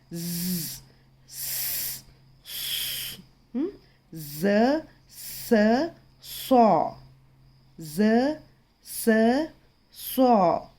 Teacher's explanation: और ये जो 3 अल्फ़ाबेट्स हैं ना, इनको सीटी वाले हुरूफ भी कहा जाता है, क्योंकि इसमें जब इसको हम प्रोनाउंस करते हैं तो सीटी की आवाज़ आती है। · ज़बान की नोक अगले ऊपरी और निचले दांतों के किनारे को मिलाने से ज़ स सौ अदा होते हैं।